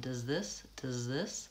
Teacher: aren't really saying clearly excuse me does this with a break I go from the Z sound right into the th sound